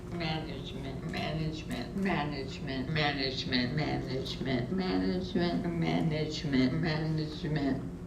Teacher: you can notice the decline in speaking rate and also in articulatory precision towards the end there